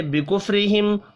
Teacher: را کو باریک پڑھنا ہے زیر کی وجہ سے، اب یہاں بھی ملا کر پڑھیں گے تو اظہار شفی ہوگا، غنہ نہیں ہوگا۔